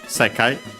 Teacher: a Chinese compound accent on the first syllable